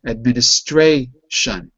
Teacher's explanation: But with shun, administration. A is the second to last syllable. It's stressed.